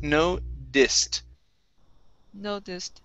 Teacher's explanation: the t is going to be a flap t